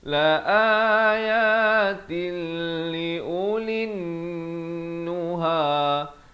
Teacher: idgham bila gunnah, masuk tanpa dengung